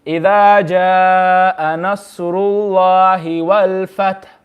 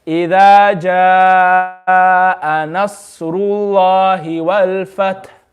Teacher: You read the last letter with a sakin, but immediately thereafter you indicate your lips towards the dhamma. · See, I didn't say wal-fathu, I just said wal-fath. And I just made my lips round. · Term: ishmam